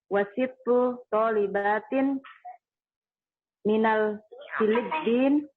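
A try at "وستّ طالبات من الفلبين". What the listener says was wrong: Filipini diberikan harokatnya. Wasittu talibatin minal Filipini. Ulang lagi.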